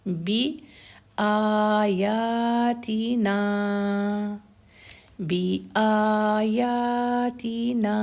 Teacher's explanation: زبر کے ساتھ الف ہے، تو آ، یا اور نا تینوں چیزوں کو برابر 2 حرکت کا ٹائم آئے گا ۔ بی سنگل حرکت ہے، تی سنگل حرکت ہے، بی آیاتینا،